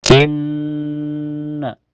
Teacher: Inna di awal ayat ada gunah musyaddadah karena ada nun bertasdid. Cara bacanya ditahan sekitar dua ketukan saja. Dan sebabnya sebelum bertasdid, sebelum nun bertasdid ada huruf hidup yaitu harakat kasrah di I.